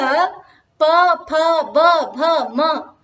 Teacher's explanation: तर्हि अत्र उच्यते अत्र ओष्ठयोः परस्परं स्पर्शनम् अस्ति। ओष्ठयोः प इति उच्चारयामः चेत् ओष्ठयोः स्पर्शः भवति, पुनः फ इति उच्चारयामः चेत् ओष्ठयोः स्पर्शनं भवति। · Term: पवर्ग